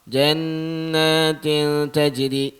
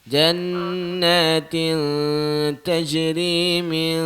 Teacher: Min dengung tu bagi cukup sikit.